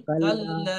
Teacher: কাল্লা আলিফের মাদ্দা কাল্লা আছে, একাধিক পরিমাণ টান দিয়ে বলেন